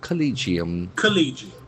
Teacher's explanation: The accent falls in the second syllable.